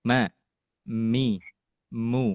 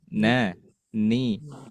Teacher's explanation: Dan ketika ada mim atau nun yang berharokat mau dalam keadaan kasroh, fathah maupun dhammah, maka termasuk dalam kategori ankos yang paling kurang sempurna, yaitu dengungan yang keluar dari al-khayshumnya begitu kecil, tetapi masih kerasa ada dengungan seperti ma, mi, masih ada keluar, mu, na, ni, nu, masih ada keluar ya, ma, mi, mu.